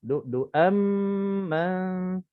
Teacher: Di sini tanwin bertemu dengan mim. Jadi utamakan idgham ma'al gunnah. Jadi cara bacaannya sama juga, 2 harakat.